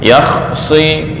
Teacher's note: Lidah naik ke atas dan bacanya seolah-olah kenyang. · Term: isti'la